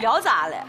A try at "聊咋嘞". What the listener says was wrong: 你 看 你 能 听 得 出 来 我 跟 你 微 妙 的 不 一 样 ， 重 音 聊 咋 嘞 ， 哎 ， 聊 咋 嘞 ， 对 ， 就 这 种 微 妙 的 东 西 ，